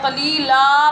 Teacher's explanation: قلیلن کی بجائے قلیلا پڑھیں گے اور تھوڑا سا دراز کر کے پڑھیں گے ۔ الف کا مطلب ہوتا ہے دراز کر کے پڑھنا، اس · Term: الف مدہ